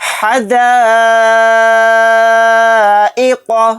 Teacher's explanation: قاف کو یہاں پر موٹا یعنی پر پڑھیں گے